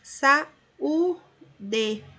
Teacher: nós temos aqui cada vogal em uma sílaba. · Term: desencontro